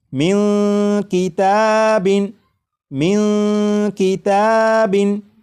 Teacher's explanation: آ چکا ہے، لہٰذا اس نون ساکن میں اخفا ہوگا، یعنی اس نون ساکن کی آواز کو ناک میں چھپا کر غنہ کر کے پڑھیں گے